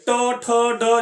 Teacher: ड का उच्चारण स्थान, देखिए ट, ठ, ड जो बोलते हैं मूर्धा, जो हमारा जीव है ना वो मूर्धा में सट रहा है, तो ड का उच्चारण स्थान बोलेगा तो मूर्धा हो जाएगा।